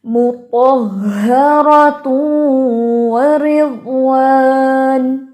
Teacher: ایک چیز آپ نے بہت کوشش کرنی ہے ہا کو سینے سے ادا کرنے کے لیے، تہ تہ نہیں پڑھنا آپ نے